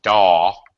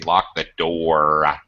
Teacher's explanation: They don't pronounce the R's at the end of their words. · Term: British accent